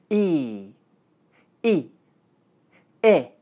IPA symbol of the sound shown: ɪ